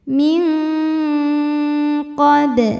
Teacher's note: min ada hukum ikhfa ab'ad karena nun sukun menghadapi huruf qf maka Nun dibaca samar-samar siap-siap menuju qf disertai dengung dan dengungnya besar karena qof makhrajnya jauh dari Nun Min qob